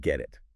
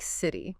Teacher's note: >> When a T sound comes between two vowel sounds, it often softens. It sounds less like a sharp t and more like a soft d or even sometimes a quick r sound. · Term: flap T